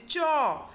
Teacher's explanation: যে প্রথমে শ্বাসবায়ুটা বহির্গমনের পথ রুদ্ধ হয়েছে চ তারপরে মানে মানে প্রথমে জিহাটা আটকে যাচ্ছে তারপরেই কিন্তু আস্তে করে জিউহাটা ফাঁক হয়ে শ্বাসবায়ুটা বহির্গত হচ্ছে · ফাঁক হয়ে শ্বাসবায়ুটা বহির্গত হচ্ছে তাই এর ফলে দেখা যাচ্ছে যে একটা মুখ বিবরের মধ্যে জিউহার ঘর্ষণজনিত প্রভাব সৃষ্টি হচ্ছে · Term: ঘৃষ্ট ধ্বনি